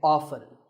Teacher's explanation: the more common pronunciation is with the T silent